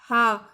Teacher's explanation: और जो हा है वह कंठ से, हमने कहा हा, तो आपने देखा कि हमारे कंठ पर जो है ज़्यादा फोर्स पड़ेगा हा वर्ड को बोलने में